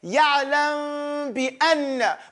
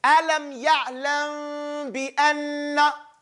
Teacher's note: My lips only come together when I get to the ba. They get real close, real thin. But they don't close. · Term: Ikhfa shafwiyya